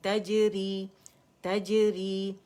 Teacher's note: قلقلہ باریک کریں گے